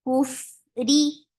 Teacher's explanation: ra is light because there is kasra under it.